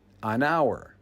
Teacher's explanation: The word hour is pronounced with a silent H. So the first sound of the word is actually a vowel sound. Hour. An hour.